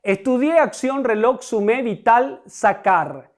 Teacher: Todas son palabras agudas porque la sílaba tónica es la última.